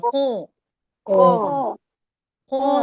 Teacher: جو زبان کا بالکل لاسٹ حصہ ہے وہاں سے حلق خو نکالیے